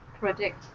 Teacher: the stress is on the end of the word predict